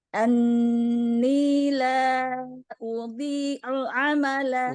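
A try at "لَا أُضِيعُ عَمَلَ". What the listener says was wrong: Udhi tebal. La udhi'u'a. Udhi tebal. La udhi'u'a. Amalah.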